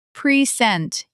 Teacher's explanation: in present, the first syllable becomes almost swallowed. Present, you barely hear the first vowel. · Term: unstressed